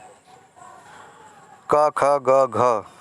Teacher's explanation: घ वर्ण का उच्चारण स्थान क्या है? तो घ वर्ण का कंठ है।